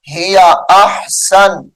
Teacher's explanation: وقف کی حالت میں احسن نون کو ساکن کر کے پڑھیں گے